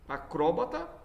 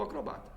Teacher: acróbata, ela é uma proparoxítona, ou então será acrobata paroxítona.